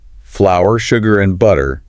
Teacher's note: And when they list the ingredients, flour, sugar, and butter, there's a slight pause and stress on each item.